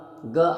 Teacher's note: ग जो है उच्चारण स्थान कंठ है। ठीक है, क्योंकि ये इसमें क वर्ग आते हैं।